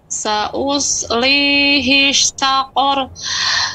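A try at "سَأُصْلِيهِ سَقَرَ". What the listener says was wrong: Ada pelambatan di sa, harus lebih cepat lagi Ibu. Sa'uslihi saqar.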